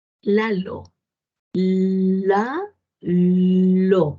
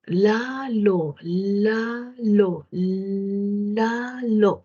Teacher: Entonces mi lengua se mueve así y el aire sale por un lado y por el otro. Por eso le dicen lateral, porque el aire sale por los laterales de la lengua.